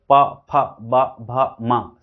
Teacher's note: प, फ, ब, भ, म, सबको एक स्थान लिप से रोके तो इससे होस्ट हो गया।